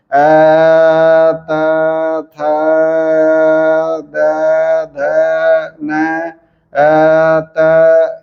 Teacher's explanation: अ बोलते समय हम लोग जब दंत पर अवरोध करते हैं तो त थ द की ध्वनि उत्पन्न होती है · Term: दंत वर्ण